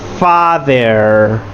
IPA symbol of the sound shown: ɑ